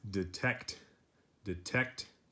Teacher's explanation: stress or a stronger sound is on the second syllable